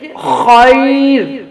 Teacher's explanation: را ساکن سے پہلے جب یا ساکن آ جائے تو پھر ہم اس را کو باریک کرتے ہیں